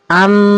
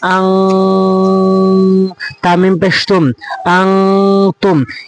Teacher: কেননা নুন সাকিনের পর তা রয়েছে, আর তা হচ্ছে 15টির মধ্যে একটি রয়েছে। তাই এই নুন সাকিনকে নাকের ভিতরে নিয়ে পড়তে হবে। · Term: গুণনা